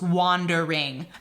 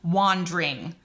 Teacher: the word wandering in shakespeare's accent that would be three syllables wandering but that would not fit the ten syllable per line